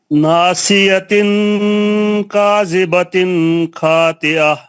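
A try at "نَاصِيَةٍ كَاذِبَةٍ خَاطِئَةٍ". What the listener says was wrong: پھر کاذبتن ختم. کاذبتن اس سے زیادہ لمبا نہیں ہونا ہوگا.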